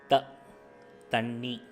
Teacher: இந்த த வந்து அல்ப பிராணன், அதுக்கு வந்து காற்று ரொம்ப வராது